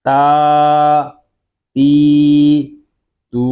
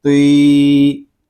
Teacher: تا کو باریک پڑھیں گے اور تو کو پر یعنی موٹا کر کے پڑھیں گے۔ تو کھڑا زبر تو، اس کو تو یا تو اس طرح نہیں پڑھیں گے، بلکہ اس کی آواز کو ہوا میں ختم کریں گے۔